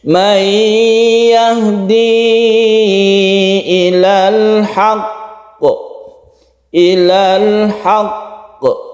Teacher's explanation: tasydid ini harus kita tekan ke huruf qafnya kemudian kita pantulkan